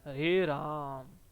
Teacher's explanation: जो राम शब्द है उसमें जो म है उसको हम लंबा खींचते हैं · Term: प्लूत स्वर